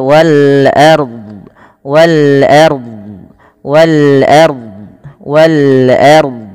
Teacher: Ro di sini dinamakan dengan ro takhim karena ro-nya didahului dengan huruf fathah. Kemudian wal ardi kullul lahu.